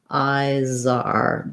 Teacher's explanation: I should hear that Z when I'm linking. But when I'm saying them by themselves, that Z is not as strong.